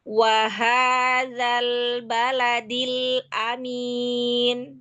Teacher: hurufnya dzal ujung lidahnya di ujung gigi atas.